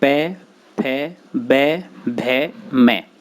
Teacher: इन वर्णों को ओष्ठ कहा जाता है। इनके उच्चारण में जिह्वा के सहयोग से दोनों ओष्ठ परस्पर मिल जाते हैं।